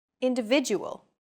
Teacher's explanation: The stressed syllable vi in individual is deemed more important, so it's pronounced longer than all other syllables. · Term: stress-timed language